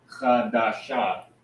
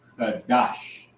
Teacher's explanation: when you pronounce it together, you'll drop that ah at the end. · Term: drop that ah sound